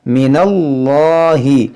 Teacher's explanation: ہم موٹا پڑھیں گے، من اللہ، اس الف لام کو نہیں پڑھیں گے، من اللہ پڑھیں گے اس کو